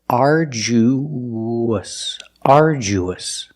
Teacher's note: when you link the oo to the us, there's a sound that links the vowels. It's like a W. It's the w sound.